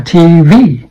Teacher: The v sound with the top teeth on the bottom lip.